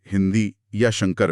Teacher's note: अनुस्वार, इसमें हवा केवल नाक से बाहर आती है। ये साधारण अंगबिंदी होती है, जैसे हिंदी या शंकर में।